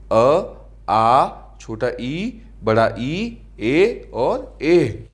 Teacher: अवृत्ताकार। वे सभी स्वर जिनके उच्चारण पर होठ गोल यानी वृत्ताकार न होकर फैले रहें